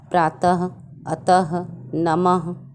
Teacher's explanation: अह को हम विसर्ग कहते हैं, क्योंकि इसका उच्चारण ह की तरह होता है